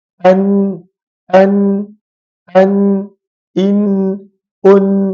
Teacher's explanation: hujung lidah ini perlu untuk menyentuh gusi yang apa gusi yang yang berada pada bahagian atas gigi atas · Kata para ulama, min tarfil lisan. Huruf nun ini keluar daripada hujung lidah. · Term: makhraj Nun, makhraj huruf nun